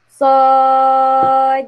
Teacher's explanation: Baca dia 6 harkat. Mad lazim semua 6 harkat. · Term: mad lazim harfi mukhaffaf